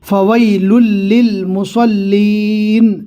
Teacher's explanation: صاد کو پور پڑھنا ہے، مسلین نہیں پڑھنا